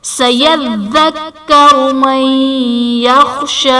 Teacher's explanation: من یخشا میں نون ساکن کے بعد حروف یرملون میں سے یا ہے تو یہاں پر ادغام مع الغنہ کا قاعدہ ہوگا، یعنی نون ساکن میں ہم غنہ کر کے پڑھیں گے۔